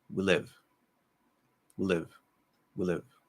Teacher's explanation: So you'll actually hear, instead of we live, you'll hear something like we live, we live, we live. So I'm actually not even saying we anymore. I'm doing a W and straight into the L.